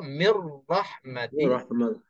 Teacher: Ra dalam perkataan yang kedua. Maka kita masukkan nun ke dalam ra.